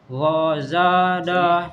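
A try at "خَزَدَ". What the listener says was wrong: Kho. Kho. Bukan gho, tapi kho. Bagian kho. Bukan gho, tapi kho. Ya.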